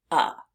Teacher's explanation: we see the vowel e but it's being pronounced as uh as if it were a short u